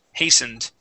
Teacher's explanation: that t is going to be silent